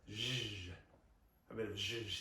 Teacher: So the Shirley Bassey is zh, a bit of zh in your life. And it's the SH of Shirley, right? But with the vocal folds closed. So for this, I want you to start breathing out on a sh, and then add a bit of zh.